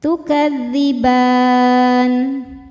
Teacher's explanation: Mad thabi'inya fathah panjang pada huruf ba, huruf yang disukunkan nya nun. Maka ba nya panjang boleh dua atau empat atau enam harakat asal konsisten dalam satu kali baca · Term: mad aridh lis sukun